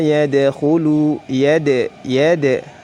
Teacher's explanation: dal memantul karena memiliki sifat qalqalah.